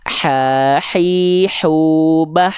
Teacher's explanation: hak kecil juga punya sifat nafas. Ya, tapi karakternya berbisik.